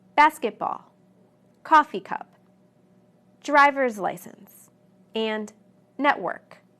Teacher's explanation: where did i put the stress yes on the first word of each compound noun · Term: regular compound nouns